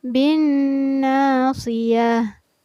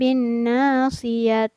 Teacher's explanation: Nah, ta marbuto ini apabila berada di ujung ayat, maka cara membacanya seolah-olah dijadikan huruf H yang bersukun. Jadi kedengaran tidak terbaca ta, melainkan terbaca sebagai H.